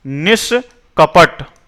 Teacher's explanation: है यहां पर क है तो विसर्ग परिवर्तित हो जाएगा इसमें अब मूर्धन्य स में विसर्ग परिवर्तित हो जाएगा